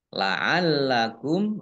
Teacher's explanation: lam tasdid dibaca double lamnya. Mim dhammah mim sukun bertemu dengan huruf ta bacaan idhar safawi dibaca jelas.